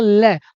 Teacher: जब आप बोलेंगे लै, तो दांतों पे जीभ लगेगी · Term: दंत वर्ण